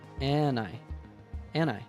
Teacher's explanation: he also dropped the duh from and and linked it to I